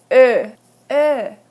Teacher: A close to mid-front rounded vowel